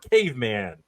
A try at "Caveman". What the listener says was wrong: No E. The E is silent. It's Caveman.